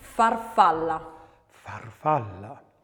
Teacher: the letter F is unvoiced, labiodental and fricative.